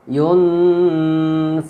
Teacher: fa ini huruf ikhfa, maka jadi baca samar dengan dengung